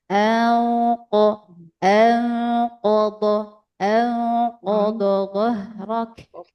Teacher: Jadi ini ikhfa, tapi karena ketemunya huruf qaf, jadi agak diangkat pangkal lidahnya ya. Jadi bukan angko, agak membulat.